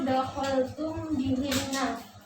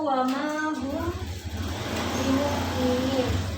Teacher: cara pembacaannya yaitu menyamarkan bacaan mim mati di bibir sambil didengungkan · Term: ikhfa syafawi